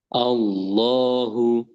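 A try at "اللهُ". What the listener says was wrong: Nah, itu sudah lumayan. Nah, nanti bisa sambil di lebih ditebalkan lagi. Allahu. Allahu.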